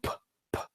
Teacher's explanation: It's just a puff of air. You open your lips and the air comes out. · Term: unvoiced sound